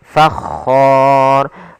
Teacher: ra yang dibaca dengan tebal maka dinamakan ra tafkhim · Padahal ful khor ada bacaan mad arid lukun. Yaitu mad yang terjadi di akhir bacaan karena wakaf dan sebelum huruf akhirnya ada huruf mad · Kemudian di sini hukum ro-nya, ro yang dibaca dengan tebal, maka dinamakan ro tafkhim, karena sebelumnya ada huruf fathah dan kemudian bertemu dengan huruf mad, maka ro-nya dibaca dengan tebal.